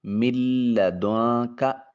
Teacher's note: نون ساکن ہے اور پھر اس کے بعد کاف حرف اخفا ہے، اس لیے یہاں اخفا کا قانون ہوگا۔ پہلے نون کو لام کے ساتھ ملائیں گے، دوسرے نون پر نون کو چھپا کر ادا کریں گے، اس کو ادغام متقاربین کہا جائے گا۔